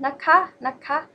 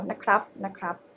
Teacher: it's always high tone naka